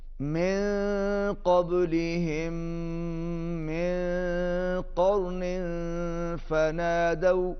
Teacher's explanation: नून साकिन के बाद क़ाफ आ रहा है, यहाँ पर इख्फा होगा, आवाज़ नाक में जाएगी